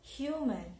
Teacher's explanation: in a word human here the stress is on the first syllable